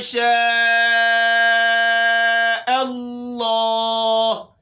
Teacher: الا میں لام حمزہ کو ہم نے جماؤں کے ساتھ پڑھنا ہے، اور شاہ میں مد ہو گیا، اور اللہ، لفظ اللہ کا نام، لفظ اللہ کو ہم موٹا پڑھیں